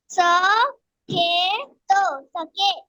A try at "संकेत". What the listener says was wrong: स नहीं है ना, वो संग है ना, संग, संग के त, संकेत।